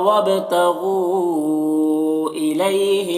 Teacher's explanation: الی میں یا لین ہے، اسے نرم آواز کے ساتھ جلد پڑھیں گے